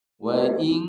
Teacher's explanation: wau ini dia tidak ada Mad di depannya ada huruf hamzah huruf hamzah bukan huruf alif maka wau dibaca pendek